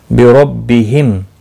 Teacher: रो ज़बर की वजह से पुर पड़ा जाएगा